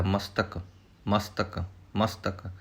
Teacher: ਜੇ ਇਸ ਤਰ੍ਹਾਂ ਪਾਠ ਕਰਾਂਗੇ ਤਾਂ ਸੱਸਾ ਅੱਧਾ ਲੱਗੇਗਾ, ਪਰ ਇੱਥੇ ਮਸਤਕ ਦੇ ਵਿੱਚ ਸੱਸਾ ਅੱਧਾ ਹੀ ਲਾਉਣਾ ਹੈ, ਕਿਉਂਕਿ ਤੱਤਾ ਪੈਰ ਵਿੱਚ ਹੈ, ਤੱਤਾ ਪੂਰਾ ਬੋਲਿਆ ਜਾਏਗਾ, ਸੱਸਾ ਅੱਧਾ ਰਹਿ ਜਾਏਗਾ